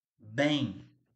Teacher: esse M aqui ele tem um I embutido ali, então ele é semivogal